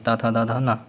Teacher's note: दंत में हमारी जो जीभ होती है वो दांत में जाके टकराती है।